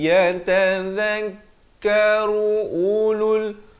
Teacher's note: Di sini ru nak ke u, jangan lambat. Ru hanya 1 harakat. Bunyi saja ru terus masuk ulul.